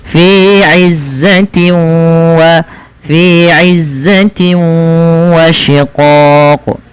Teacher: hilang suara nunnya Fi Izza itu yang pertama langkah yang kedua disertai dengan bacaan gunah yaitu memasukkan suaranya ke rongga hidung kita